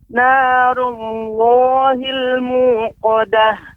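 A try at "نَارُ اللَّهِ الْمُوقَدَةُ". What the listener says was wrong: Juga pengucapan Allah, ya. Masih terdengar seperti narullah, ya. Tapi pengucapannya narullah, ya. Narullah, dengan narullah. Tidak ada bantuan bibir sehingga memonyongkan bibir. Narullah memonyongkan, tidak. Narullah, bibir tetap seperti pada posisinya.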